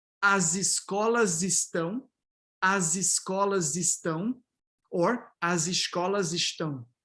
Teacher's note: when it's resyllabified, both S and Sh neutralize to Z